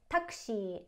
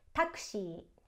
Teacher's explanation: the choonpu follows the shi, which is making the ending vowel of shi longer